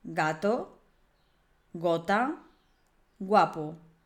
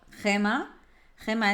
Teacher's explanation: con las vocales a o u suena suave gato gota guapo con las vocales e e i suena más fuerte casí como la consonante J la del jamón es decir G Como por ejemplo Gema Gema